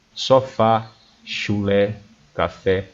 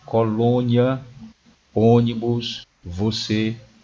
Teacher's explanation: O circunflexo, chamado de chapeuzinho, é exatamente o contrário do agudo. O agudo é um som aberto e o circunflexo é um som fechado.